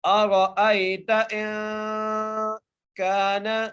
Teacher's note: کاف کو ایک الف مقدار کھینچ کے پڑھیں گے، نون کے اوپر زبر ہے، آگے عین کے اوپر بھی زبر ہے، لام کو لام سے ملانا ہے۔